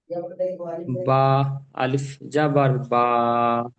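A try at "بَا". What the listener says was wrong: টান। ভাই, বা হরফটি এক আলিফ টান হরফ, তাই বা হরফটিকে এক আলিফ টান দিয়ে প্রথমে বা বলার সময় এক আলিফ টান দেন।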